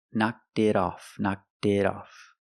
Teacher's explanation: The T in it is a fast d.